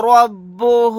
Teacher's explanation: یہاں پر را کو موٹا یعنی پر پڑھیں گے کیونکہ را کے اوپر زبر ہے